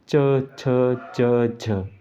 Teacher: स्पर्श तो है पर थोड़ा संघर्ष करना पड़ा, कैसे, जैसे क ख ग घ ऐसे आराम से बोला जाए, चा में थोड़ा प्रेशर पड़ता है, संघर्ष होता है, हमारे मुंह को संघर्ष करना पड़ता है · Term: स्पर्श संघर्षी